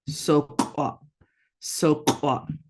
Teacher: glottal stops kind of cut the word off. So you're going to abruptly stop.